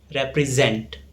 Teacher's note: The stress falls on zent.